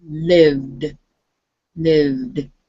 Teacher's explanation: you go from the V sound where your lips are together and end it with your tongue saying the D. Lived.